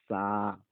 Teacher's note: এখানে সা, সায়ের উচ্চারণ কিন্তু বাতাস বের করতে হবে। সায়ের উচ্চারণ জিহ্বা বের করে বাতাস বের করতে হবে